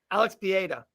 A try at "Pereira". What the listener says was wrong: Pereira. No. There's only one R in the name you're saying. There's 2 R's in Pereira.